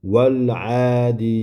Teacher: Bundan keyin van fathasini to'g'ri mana bu biz sukunlik lamga qo'ydik. Val o'rtada alif o'qilmadi. Demak, bu alifni o'qimasdan tashlab ketamiz.